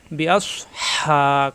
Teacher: হা কণ্ঠনালীতে চাপ সৃষ্টি হবে